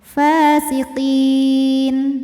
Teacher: jika berhenti kita panjangkan qofnya. Boleh dua, boleh empat, boleh enam harokat asal konsisten dalam sekali bacaan. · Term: mad arid lisukun